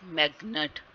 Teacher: like magnet is stressed as magnet, मैग पे stress आ रहा है